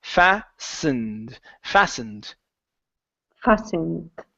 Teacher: this word is pronounced fastened the T disappears